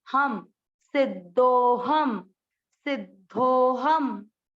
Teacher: वापस वही चीज, अनुस्वार, अनुस्वार लास्ट पे है अक्षर के, इसलिए इसको पढ़ेंगे आधा म